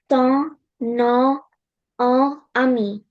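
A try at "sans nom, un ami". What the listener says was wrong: Good for you.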